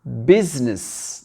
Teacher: Et le U, c'est un petit I ici. Business. Donc, le I, on ne le prononce pas.